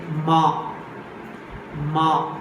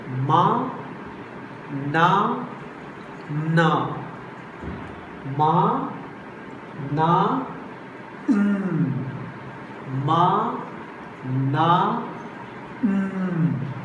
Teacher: We can close our mouth, but air is escaping to the nose. And at the same time, soft palate is lowered. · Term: nasal